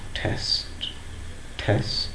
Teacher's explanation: While the second T is not pronounced with aspiration, it is unaspirated. The first T is aspirated, whereas the second T is not aspirated, it is unaspirated.